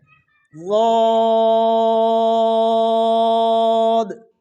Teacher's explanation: ضاد کو بھی موٹائی کا خیال کریں گے اور ہونٹ گول ہونے سے بھی بچائیں گے